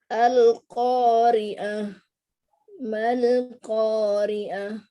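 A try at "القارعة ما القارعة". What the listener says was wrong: القارعة نوضح العين.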